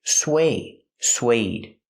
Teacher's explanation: Use the w sound, like in what and where, sw, sw. Plus the long a, like bake a cake.